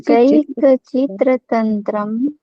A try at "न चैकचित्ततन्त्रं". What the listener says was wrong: देखिए चित्र नहीं है तंत्र है, चित्त तंत्रम, न चैक चित्त तंत्रम